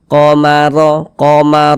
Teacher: dia dibaca tkhim sehingga pengkalis kita naik terangkat ke atas ketika Kita mengucapkannya tebalkan huruf r-nya